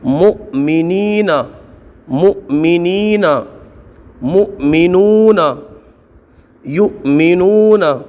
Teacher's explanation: حمزہ ساکنہ کو، یعنی وہ حمزہ جس کے اوپر جزم ہو اس کو ہمیشہ جھٹکا دے کے پڑھتے ہیں